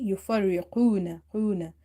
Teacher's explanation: So whenever you say qaf, the back or the root of your tongue should be touching the upper palate, the soft part of your upper palate or upper mouth